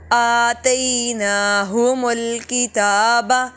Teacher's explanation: ہا اور میم بالکل لمبا نہیں ہوں گے